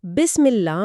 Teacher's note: हम बिस्म के बाद सीधा लाम पर चले जाते हैं। बीच वाले अलिफ को छोड़ देते हैं। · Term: हमजा वसली